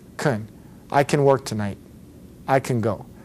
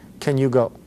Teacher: say can you go but again if the a is softer it almost sounds like you're going right from the consonant to the other consonant cutting out the vowel in between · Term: softened version